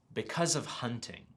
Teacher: you can hear the consonant linking with the vowel sound